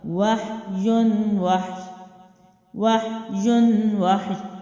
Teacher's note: ہا جو ہے آلریڈی جزم والا ہے تو واو کی زبر کے ساتھ یہ دونوں حروف پڑھے جائیں گے اور کیا ہوگا، وحیٌ وحی، وحیٌ وحی۔ یا جو ہے اس کی آواز رہے گی، ٹھیک ہے، نہ کلکلا ہوگا نہ لمبا ہوگا، لیکن آواز رہے گی